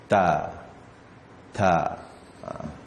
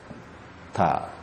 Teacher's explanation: lidah bertemu belakang gigi atas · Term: huruf ta